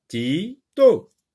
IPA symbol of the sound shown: t